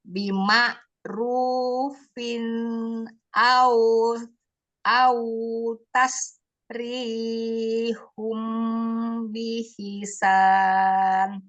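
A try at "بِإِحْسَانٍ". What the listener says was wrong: Bukan bihisan, biihsan. Bukan ha. Yang kasroh kan hamzah, ba kasroh, hamzah kasroh, alif ya kan? Baru ha sukun, biih bukan bihi.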